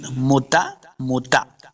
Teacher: تا کو موٹا نہیں کریں